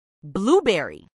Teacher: acentuación en la primera sílaba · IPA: ˈbluˌbɛri